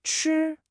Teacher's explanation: It's the first tone, so it's high and flat.